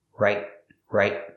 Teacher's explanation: The T in right is a stop T. It's at the end of the word.